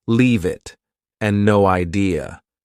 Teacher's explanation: Both sound like they have no spaces between the words. Native speakers do this a lot. · Sometimes one word flows into another, for example, leave it and no idea. Both sound like they have no spaces between the words.